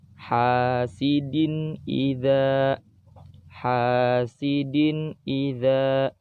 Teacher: Di situ ada tanwin, setelah tanwin ada huruf hamzah, maka tanwinnya harus dibaca jelas. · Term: izhar